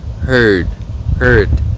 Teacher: heard cái âm cuối là phụ âm hữu thanh, cho nên nguyên âm sẽ có xu hướng dài hơn một chút.